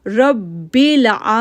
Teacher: را کو پر آواز پڑھا اور پھر با کے ساتھ ہارڈلی جوڑا کیونکہ با کے اوپر تشدید ہے